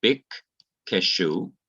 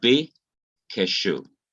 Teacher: But the rafe, the horizontal line that is drawn over the kof, indicates that the dagesh forte has been removed. So we now have one Q instead of two Qs. We still have the vocal schwa, which is indicated by this short E that is written to the upper right hand of the Q.